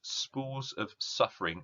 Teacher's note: this S sounds a bit kind of aggressive, that kind of hissing, spitting, sort of frustrated sound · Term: Sibilance